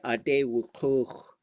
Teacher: when you go perfective, that kuch part should be long and low. Day and dach, long and low.